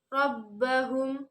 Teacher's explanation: terdapat ro tafkhim atau ro tebal, yaitu ro berharokat fathah. Rabbahum, kemudian terdapat hukum bacaan ikhfa syafawi karena mim bersukun bertemu dengan huruf ba, ditahan dan dibaca samar.